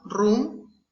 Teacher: It's alveolar and trill, roll and tap.